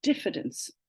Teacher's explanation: And so what speech does, when you add dis to fide, we lose the S, we lose that bit, and it just becomes diffidence. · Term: prefix assimilation